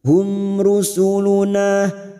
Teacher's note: Idhar syafawi mim sukun dibaca jelas tanpa mendengung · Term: idhar safawi